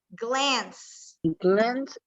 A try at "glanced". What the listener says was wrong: Glance sería con D. Glanced, con la D al final, ¿verdad? La E silenciosa.